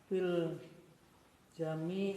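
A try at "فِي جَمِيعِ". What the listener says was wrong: Fi tidak ada alif lamnya ya.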